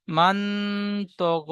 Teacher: নুন সাকিনের আওয়াজকে নাকে তুলে একালি পরিমাণ গুণনা করে পড়তে হবে, একে ইকফা বলে।